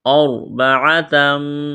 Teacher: را ساکن سے پہلے زبر ہے، را کو موٹا کرنا ہے